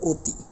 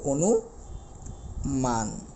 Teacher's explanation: অ এর উচ্চারণ ও এর মত হয়ে যাবে